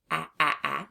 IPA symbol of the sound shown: ă